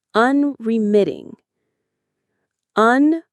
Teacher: The stress is on the third syllable. MIT. Unreiting.